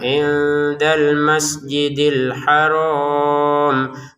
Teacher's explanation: nun ke dal dibaca dengan samar · Untuk al-haramnya kita baca 6 harokat karena berhenti. Kalau dilanjutkan jadi 2 harokat.